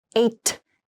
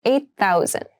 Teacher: when you pronounce this the eight and thousand sound like they connect a little bit so not 8, but 8,000 8,000 people live in that Village